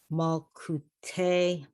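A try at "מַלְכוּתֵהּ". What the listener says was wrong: It's malchute. That's a chaf.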